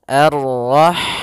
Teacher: Ha dia memiliki sifat hamas, yaitu maka harus mengalirnya nafas.